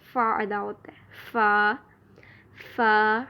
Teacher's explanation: سامنے والے اوپر کے 2 دانتوں کا سرا نیچے والے ہونٹ کے اندرونی حصے سے لگے تو اس سے فا ادا ہوتا ہے، اور فا ادا کرتے وقت ہمس ہوتا ہے۔ ہمس یعنی سانس جو ہے وہ تھوڑا سا باہر آئے گا۔